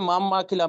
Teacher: তো নুন সাকিনের পরে এখানে বা এসছে। তাই নুনটাকে মিমের দ্বারা পরিবর্তন করে এক আলিফ পরিমাণ গুণনা করে পড়তে হয়। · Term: ইখলাফ